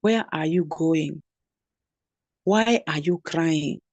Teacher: If a word begins with a relative pronoun or the wh word, then it does not have a rising inonation. It has a falling intonation as if it is another statement.